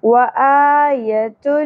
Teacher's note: ہا اقصی حلق سے ادا ہوگا گہرائی کے ساتھ